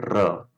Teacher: र में आपकी आगे यानी जीभ का अग्रभाग जो है वो एकदम से कांप जाता है, तो उसी को हम लुंठित या प्रकंपी कहते हैं। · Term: प्रकंपी ध्वनि